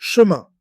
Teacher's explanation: The ending sound goes through the nose, so listen for that soft nasal vowel.